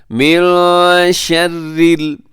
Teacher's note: یہاں من شر النون ساکن ہے اور نون ساکن کے بعد شین ہے، یہاں اخفا کیجیے گا، آواز کو ایسے آپ نے ناک میں چھپانا ہے